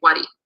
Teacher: So in the case of money, it's a high-toned word, wari, and you're adding on the low tone in this case. So both the high and the low are preserved, and you get wari, the money.